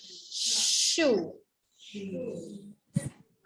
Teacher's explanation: huruf shin ni sifat dia angin kena keluar banyak.